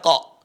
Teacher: ada pantulan memantul lagi suara Q yang sukun